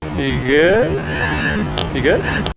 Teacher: This phrase has a rising intonation, signaling that it's actually a yes-no question, like, are you okay?